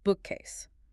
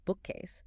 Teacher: The stress in the compound word bookcase falls heavily on the first syllable, bookcase. If a learner stresses the second syllable, like bookcase, it sounds completely unnatural to a native ear, even if the grammar of the sentence is absolutely perfect.